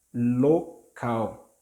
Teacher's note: Note that the last L has sound of U